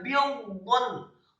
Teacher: Dha-nya dibaca sukun, ba-nya dibaca tipis kasroh 1 harokat, kemudian dha-nya bidun. Dha-nya dibaca tafkhim, posisi lidah kita di langit-langit atas